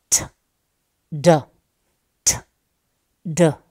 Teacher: obstruction is provided to this outgoing air at alveolar Ridge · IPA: [d]